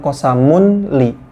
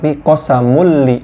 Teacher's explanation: Dileburkan masuk kepada huruf lamnya ya. Qosamulli.